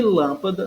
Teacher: a sílaba tônica que é a lã que é anti penúltima